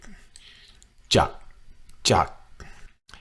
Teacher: Not a K sound, it's more of a G sound. It's more of a G sound that ends with a hard K. Jak, jak. It's a hybrid sound.